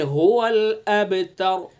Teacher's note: را کو پر پڑھیں گے چونکہ را ساکن ہے، اس سے پہلے تا کے اوپر زبر ہے. اگر را کے اوپر حرکت بھی پڑھیں گے تو پیش کی حرکت ہے تب بھی پر پڑھی جائے گی. · اور تا کو پر نہیں کریں گے، باریک پڑھیں گے. هو الابتر.